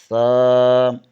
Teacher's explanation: زبان کی نوک ثنائے علیہ کے سرے سے لگے تو سا ادا ہوتا ہے